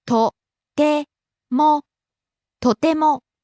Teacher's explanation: Rises on the second syllable te and stays high.